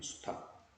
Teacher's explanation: 탁이라고 소리 나는 수탁. 리을은 탈락이 돼버린 거야. 이건 이제 이렇게, 이건 이제 떨어진 거죠.